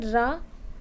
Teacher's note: इसमें मुख द्वार जीभ की नोक से शीघ्र ही बंद होता है और 2-3 बार खुलता है, यथा जैसे मतलब कह सकते हैं रा। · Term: लुंठित